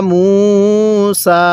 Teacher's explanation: মিমের মধ্যে তিন আলিফ টানতে হবে